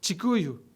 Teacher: Other examples are the K that become CH, like the language Kikuyu.